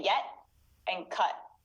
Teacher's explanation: we stop the t sound so we don't fully make that sound all the way it stays in our throat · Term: glottal stop